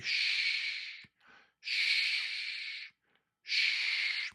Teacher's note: And sh is quiet. It's very smooth, like sh. When you say ask tell a child to be quiet, you might say sh.